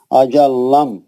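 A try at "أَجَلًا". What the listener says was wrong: लाम बस एक बार आएगा। अजल्लम नहीं है, अजलम जी।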